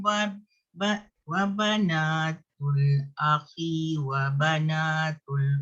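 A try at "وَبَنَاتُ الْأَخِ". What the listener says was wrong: Pendekkan. Akhi wa bana.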